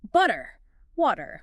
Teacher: >> So instead of a hard butter, we voice it. The vocal cords stay engaged and the sound drops down to sound almost exactly like a D.